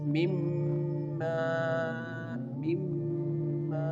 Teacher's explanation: Here the noon is merging with the mim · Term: idgham